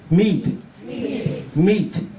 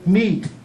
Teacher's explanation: Nó là mi đó, nhưng mà mi kéo dài. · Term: Y kéo dài